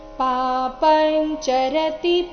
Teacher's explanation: ಅನುಸ್ವಾರದ ಉಚ್ಚಾರಣೆ ಇಲ್ಲಿ ಚ ವರ್ಗದ ಅನುನಾಸಿಕ ಯ ರೀತಿ ಆಗಿದೆ